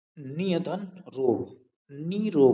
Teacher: तो यहां पर दो यह है कि यदि विसर्ग से पहले यदि विसर्ग से पहले छोटी इ या छोटा उ स्वर हो और दूसरे शब्द के आरंभ में यदि र हो तो विसर्ग का लोप हो जाता है और विसर्ग से पहले वाला जो ह्रस्व स्वर है वो दीर्घ में परिवर्तित हो जाता है।